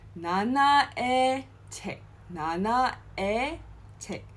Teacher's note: Alright, it's not '의, it's not '이, but '에.